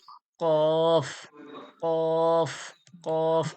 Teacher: জিহব্বার গড়া ওর সজাসজি তালু থেকে উচ্চারণ হয় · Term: দুই নক্তাওয়ালা কফ